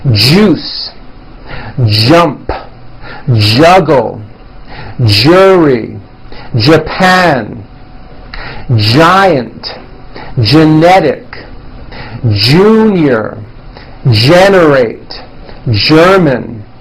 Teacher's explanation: let's practice words with the voiced American J sound. We'll start with the J sound at the beginning of words.